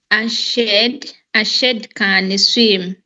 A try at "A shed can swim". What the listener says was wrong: Is it shade? What's the sound of that letter?